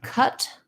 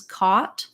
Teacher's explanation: so the cut is central and the cot is further back and my lips are rounded that's the difference between those two